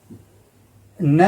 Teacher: न जो है अपने दंत से भी तो बोला जाता है और नाक से भी बोला जाता है। इसीलिए ये अनुनासिक वर्ण है।